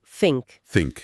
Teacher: Ahí la sustitución es más que evidente. En lugar de decir think, con la lengua entre los dientes, utilizan una F y dicen think. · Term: acento cocni